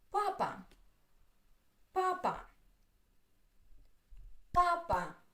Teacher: Two syllables. The first one is stressed.